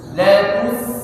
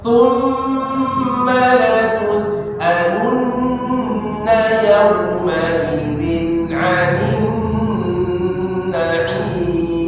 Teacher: maka huruf yang sukunnya tidak boleh ikut huruf yang sebelumnya berharakat dhammah, atau tidak boleh ikut posisi monyong